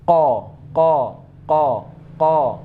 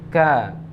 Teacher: Tapi tempatnya juga berbeda. Kalau qa itu lebih ke belakang, kalau ka agak ke depan sedikit.